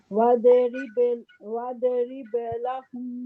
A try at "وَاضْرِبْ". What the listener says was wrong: वाव واو دوغات کو ہیوی کریں, واضرب, تو آپ نا قلقلہ کر رہی ہیں, واد قلقلہ نہیں کرنا, واضرب